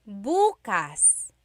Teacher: emphasis is on the first syllable that means tomorrow.